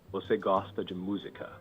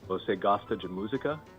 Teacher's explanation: Pronunciation, rising intonation at the end, indicating a question.